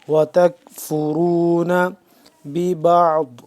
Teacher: وتکفرون را کو موٹا پڑھیں گے،